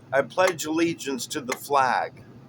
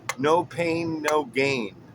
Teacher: Unstressed, stressed, unstressed, stressed. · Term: amic